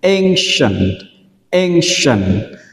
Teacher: trọng âm rơi vào âm tiết đầu tiên nên chúng ta đọc là ancient